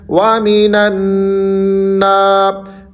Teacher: نون مشدد ہے، وَمِنَ النَّاسِ۔ تھوڑا سا آپ نے یہاں پر غنہ کرنا ہے۔ غنہ میں نے آپ کو پہلے بھی بارہا بتایا ہے کہ ناک میں آواز کو لے جا کر وہاں پر گنگنائیں، وَمِنَ النَّاسِ۔